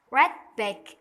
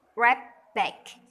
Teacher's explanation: voice assimilation of planes can demonstrate why read-back becomes rap back where the T sound is replaced by a P sound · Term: assimilation of place